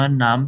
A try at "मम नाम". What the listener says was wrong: नाम, म भी पूरा है। म नाम, बोलो।